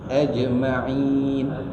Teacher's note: Ada lantunan sedikit. Iaitu dipanggil qalqalah sughra.